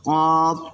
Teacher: জিহ্বার গোড়া থেকে একটু আগে বাড়িয়া তার বরাবর উপরের তালুর সঙ্গে লাগাইয়া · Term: মধ্যখান পেঁচানো কাফ